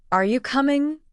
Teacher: in a monotone voice, it sounded almost like a statement, not a question